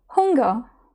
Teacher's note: Це носовий н. І коли ми вимовляємо це буквосполучення, ми опускаємо ґ. Тобто виходить ґ, наприклад, не хн, а hung.